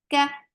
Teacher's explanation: kaf is light. Fatha open jaws. The sound is short.